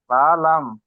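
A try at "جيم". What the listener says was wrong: জি না, এটা হবে জিম আর এটি হবে লাম। জি, জিম লাম।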